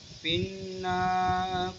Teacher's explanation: نون مشدد کا قاعدہ لگ رہا ہے، تو ہم ناک میں آواز لے جا کے پڑھیں گے